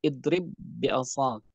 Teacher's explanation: Ba yang pertama yang tadi sukun hilang secara keseluruhan. Baik sifat maupun zat. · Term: idgham kamil